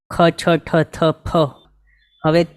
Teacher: આ બોલતા ટાઈમે કંઈક વધારે પ્રયત્ન કરવા જરૂરી છે એવી છે મોઢામાંથી હવા કાઢીને બોલાય એવી છે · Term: પ્રાણ